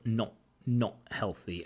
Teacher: I really like the t in the not, right? She doesn't pronounce the t, she pronounces it with something we call a glottal stop.